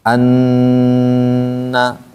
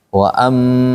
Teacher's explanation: Ditahan tekan yang ditahan dua huruf saat tasdid itu yaitu nun dan mim. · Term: gunah